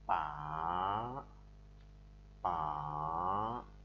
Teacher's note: thanh ba, chúng ta học đọc như sau: pa pa, đọc như dấu hỏi của tiếng Việt là thanh thấp xuống thấp rồi lại lên cao